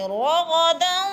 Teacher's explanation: رو موٹے حروف میں سے ہے، اور غین بھی موٹے حروف میں سے پر کر کے